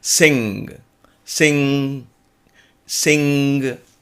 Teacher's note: there is a nasal sound that is added onto this a sound that can emanate from the base of your throat but you can bring it through the nose